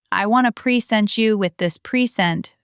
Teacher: Verb, second syllable. Noun, first syllable.